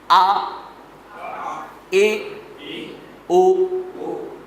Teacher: حمزہ جب بھی پڑھیں گے تو سخت پڑھیں گے اور جھٹکے کے ساتھ پڑھیں گے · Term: حمزہ کی آواز